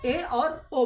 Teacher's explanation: आधे से कम मुंह खुला होता है, उसे अर्ध समृद्ध स्वर कहा जाता है।